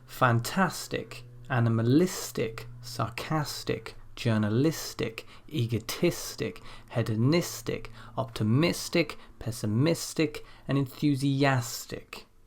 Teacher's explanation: in all of these cases the stress appears one before the suffix